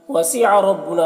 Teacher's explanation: را کے اوپر زبر ہے، را کو پر پڑھیں گے، نام الف مدہ ہے۔